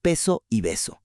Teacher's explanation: Volviendo a nuestro ejemplo de la P y la B acústicamente, a ver, ¿cuál es la única diferencia entre decir peso y beso? Ambas usan los dos labios, ambas bloquean el aire de golpe. La única diferencia matemática es un uno o un cero en las cuerdas vocales.